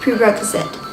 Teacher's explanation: Prerequisite is something that must exist or happen before something else can exist or happen. The stress is on the second syllable, prerequisite.